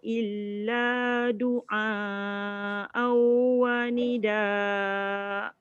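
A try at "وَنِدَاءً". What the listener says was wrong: Kejap. Doa dah panjang dah. Dengungnya kena dengung. Wanida Dia jadi mat badal sebab dia hamzah.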